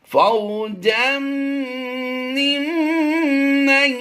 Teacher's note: میم مشدد میں ہمیشہ غنہ ہوتا ہے، تو یہاں پر دونوں ہی میم مشدد ہیں اور غنہ زمانی دیتے ہوئے ہم آواز دیں گے اس کی.